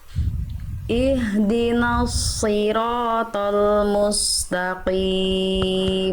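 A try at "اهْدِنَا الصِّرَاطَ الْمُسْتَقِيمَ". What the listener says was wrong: Ihdinas siratal mustaqim. Jangan tapi mustaqim tipis.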